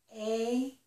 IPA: eɪ